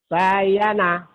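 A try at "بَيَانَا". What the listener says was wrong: Salah. Nggak ada yang panjang. Bayana.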